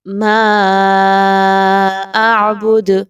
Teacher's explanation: 4 سے 5 الف کے برابر، مد کو لمبا کریں گے، مقدار کو کم نہیں رکھنا۔ اعبد، جب دال پہ آپ جزم لگا کے وقف کریں گے تو وقف کی صورت میں دال پر قلقلہ کیا جائے گا، یعنی دال کو ہلا کے پڑھا جائے گا۔